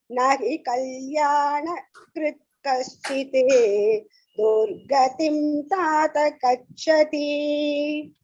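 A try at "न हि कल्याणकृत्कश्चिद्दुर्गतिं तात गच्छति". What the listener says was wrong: The only thing you need to focus on is the Mahaprana. Partha, Dukkha, Chinna. The Mahaprana pronunciation, Gachati. If you fix that, then the entire pronunciation will be perfect.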